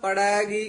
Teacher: ਪੜੈਗੀ ਪੋਲਾ ਹੀ ਬੋਲਣਾ ਲਮਕਾ ਕੇ ਵਿੱਚੋਂ ਪੜੈ ਤੇ ਗੀ ਦੇ ਵਿੱਚ ਡੈਸ਼ ਬੋਲ ਕੇ ਲਾ ਕੇ